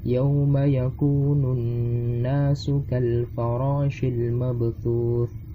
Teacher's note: Dan nun bertasdid itu dibaca dengung sebagai gunnah.